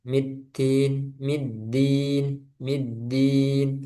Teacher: Kemudian dalnya jangan ada udaranya.